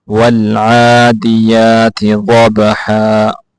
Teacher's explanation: عین کو کھینچ کے پڑھنا ہے، یا کو بھی کھینچ کے پڑھنا ہے کیونکہ ان دونوں کے اوپر کھڑی زبر ہے